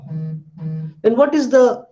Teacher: you can see that my lips, two lips are touching each other when I say p. So for that particular reason, this particular sound is known as bilabial.